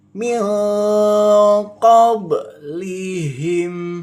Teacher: Kadang orang-orang tuh ketika membaca huruf qaf kadang suka tidak masuk di sifatnya gitu loh. Jadi bener-bener sifatnya harus dari tenggorokan huruf qaf keluarnya ya.